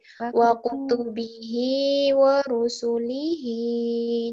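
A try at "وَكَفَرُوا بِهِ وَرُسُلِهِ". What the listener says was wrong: Su-nya yang kedua pendek, langsung.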